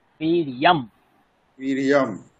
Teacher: বীর্যং বলবো না, ম উচ্চারণ করবো